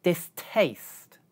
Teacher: in 'distaste' there is aspiration because we perceive this word like two words.